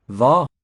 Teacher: D is completely dropped out, the D or T.